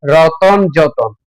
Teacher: শব্দের মাঝখানে এই যে অ ধ্বনিটা এসেছে সেটাই হচ্ছে মধ্য স্বরাগম